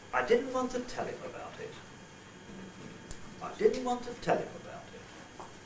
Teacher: I is going to be the pread didn't want to is going to be the head tell the nucleus and him about it the tail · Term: one word group